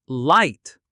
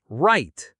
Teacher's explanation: The difference between L and R. For L, touch the roof of your mouth with your tongue tip. For R, pull your tongue back.